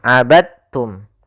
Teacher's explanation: diidgamkan dalnya kepada huruf ta sehingga dibaca dengan huruf tanya langsung. Abadtum. · cara membacanya yaitu masukkan huruf dalnya kepada huruf ta.